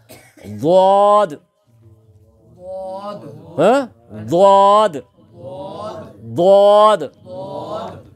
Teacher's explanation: زبان کی کروٹ کو اوپر کی داڑھوں کی جڑ سے لگانا